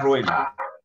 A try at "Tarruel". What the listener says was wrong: Con T.